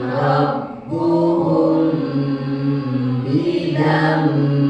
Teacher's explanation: pada kalimat rabbuhum di situ ada mim sukun ketemu ba. Cara bacanya ditahan.